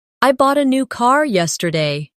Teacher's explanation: The stressed words are bought, new, and car. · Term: sentence stress